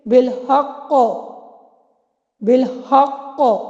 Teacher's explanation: پہلے مرتبہ کا نام ہے مشدد وقفی، یعنی مشدد حرف پر وقف کیا جائے، جیسے کہ بالحق، بالحق، یہ مشدد حرف ہے نا قاف، تو مشدد حرف پر جب بھی وقف کریں گے تو وہاں پہ پہلا مرتبہ ہوگا قلقلہ کا، اور یہ سب سے ہائیسٹ اس کا لیول ہوگا، جہاں پہ قلقلہ کی گونج سب سے زیادہ ہوگی